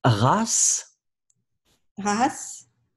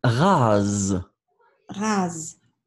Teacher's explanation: c'est vraiment la distinction entre le s, hein, le premier, et le z